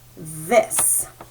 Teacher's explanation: Now this has the voiced TH we talked about, where we make a sound with our tongue in between our teeth and it kind of tickles our mouth.